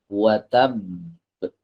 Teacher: Nah, watab di sini ada qalqalah, tapi qalqalahnya dilambatkan ya teman-teman. Ya, tidak seperti saat ia tidak bertasydid.